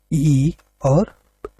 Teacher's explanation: छोटी ई और बड़ी ई ये तालव्य होते हैं।